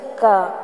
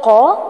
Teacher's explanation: جو ڈنڈے والا کاف ہوتا ہے اس کی آواز تھوڑا منہ کے قریب سے آتی ہے